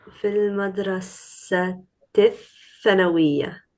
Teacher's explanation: No, don't pronounce the lam when you join it. Fil madrasati. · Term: shamsiya